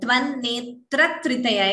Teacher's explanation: extra t is heard before tritaya. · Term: dvitvam